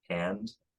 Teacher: the trap vowel diphthongizes before nasals in a lot of, maybe even most American accents.